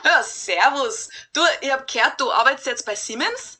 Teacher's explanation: People who speak Bavarian dialect, for example, would say Siemens with a voiceless S, just like people do in English.